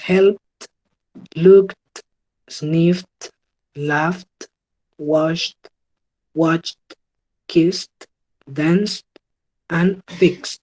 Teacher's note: Todos estos van a sonar con una T al final. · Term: sonido T